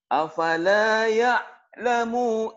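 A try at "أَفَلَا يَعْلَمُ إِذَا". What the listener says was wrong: Maunya pendek. Ayo, kenapa panjang? Afala ya'lamu ida. Emang ada manjangin di sini? Oh, jadi hafalannya salah ya, betul. Nah, ini merubah ya berarti.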